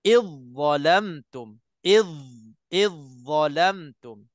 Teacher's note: Dha dah tak ada. Jadi daripada i terus kita lompat masuk dha. Dha yang kena keluar lidah, tapi dha tu tebal.